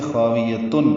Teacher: تنوین کے بعد عین آنے کی وجہ سے خاویتن اظہار ہوگا